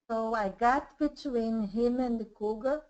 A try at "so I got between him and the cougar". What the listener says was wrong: good great sounded really good yeah very good very good